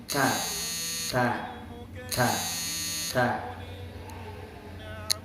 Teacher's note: makhrajnya huruf ta adalah ujung lidah menempel kepada pangkal gigi seri atas atau tempat tumbuhnya gigi seri atas.